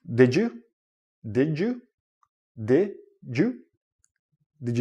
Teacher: this goes with the first idea when you're connecting words but when you're connecting words and you have a D and a y together it becomes like a J sound